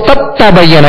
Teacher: دال کو تا میں داخل کر دیا. اب دال کی کوئی صفت باقی نہیں رہے گی, دال نہیں پڑھیں گے بلکہ تا ہی پڑھیں گے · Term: ادغام تام